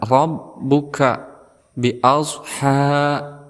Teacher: Fa'ala rabb, di sini juga ada ra yang berharakat fathah, maka kita hukumi sebagai tafhim. Kemudian ra ini ditasdidkan kepada huruf selanjutnya yaitu ba. Maka cara membacanya yaitu ada hentakan